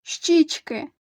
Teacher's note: буква щ позначає сполучення звуків ш ч